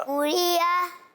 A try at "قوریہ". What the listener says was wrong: ہاں قوری یا ہو گیا نا, حمزہ زبر آ. ہاں قوری ا ایسے پڑھیں گے, قوری ا.